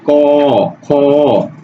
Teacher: অর্থাৎ এই অবর্ণটা কোনো কার না থাকলেও এটা লীন হয়ে যুক্ত হয়ে থাকে। যেমন ক, এই ক এর সাথে আমরা যদি একটু স্লো উচ্চারণ করি তাহলে শেষে একটা অ এর অস্তিত্ব পাই, ক, খ, অর্থাৎ ব্যঞ্জনের শেষে একটা অ লুকায়িত থাকে। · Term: লীন বর্ণ